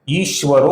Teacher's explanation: आगे व मृदु व्यंजन आने के कारण विसर्ग का ओ हुआ है।